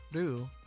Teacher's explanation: it involves tapping your tongue against the roof of your mouth just a little bit like just behind your teeth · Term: japanese r sound